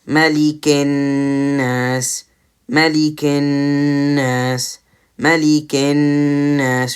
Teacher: you can hear the sound of the noon from my nose when I'm coming up to that noon with the gunna